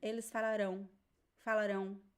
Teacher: The only difference is that in falarão, the stress is at the end. That's the only difference between the pronunciation, the stress is at the end.